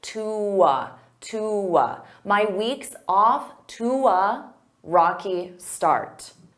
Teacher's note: instead of saying to a, I can combine those together with a w, to. So I use that w to glide.